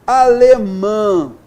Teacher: É o som an, en, in, on, E aí, na sílaba tônica, vamos então observar aqui, olha só, na letra A, nós temos alemã, aí nós temos a sílaba tônica com o an, nasal. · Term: vogal nasal